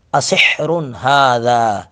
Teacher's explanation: ہا کو حلق سے ادا کریں گے ، ھذا، یہ ہا اور ہا دونوں میں فرق یاد رکھنا